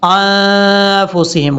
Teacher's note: انفسہم، حمزہ کے بعد جو نون ہے یہ نون ساکن ہے، نون ساکن کے بعد جب بھی فا آ جائے تو وہاں نون ساکن کا اخفاء ہوتا ہے ، یہاں پر نون ساکن کا اخفاء ہوگا، انفسہم غنہ کریں